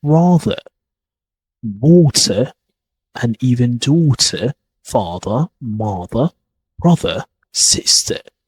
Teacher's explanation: Another thing that makes RP sound elegant is that we don't pronounce the letter R at the end of the words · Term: silent R